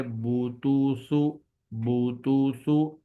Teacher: سیدھی پیش ہونٹوں کو گول کر کے بغیر کھینچے اور بغیر جھٹکا دیے پڑھی جاتی ہے · الٹی پیش ہونٹوں کو گول کر کے تھوڑا سا کھینچ کر پڑھی جاتی ہے